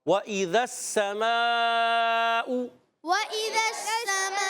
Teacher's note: واؤ کی ادائیگی ہونٹوں کی گولائی سے، ہونٹ گول ہو کے واؤ ادا ہوگا · ذال کو سین سے ملائیں گے، سین سیٹی کے ساتھ ادا ہوگا. سین پر زبر ہے، حرکت ہے، نہیں کھینچیں گے مگر رک کر ادا کریں گے.